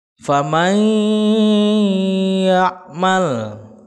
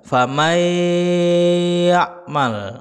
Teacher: ya famai yakmal gitu ya itu tidak boleh dibaca famae Mal tidak hanya cukup di idghomkan tapi harus didengungkan masuk ke rongga hidung ya caranya adalah kita tekan ya kita tak pencet hidung kita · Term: Idgham Bighunnah